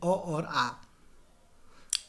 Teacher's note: अ और आ जो है कंठ से गले से उत्पन्न होते हैं